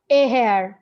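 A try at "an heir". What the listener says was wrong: এ হেয়ার না, an এয়ার, এক উত্তরাধিকারী রেখে গেছে, কারণ এখানে এইচ এর উচ্চারণটা হচ্ছে না। এইচ এর উচ্চারণ যেহেতু হয় না সেহেতু এখানে এন হবে, যেমন এয়ার, আওয়ার, অনেস্ট।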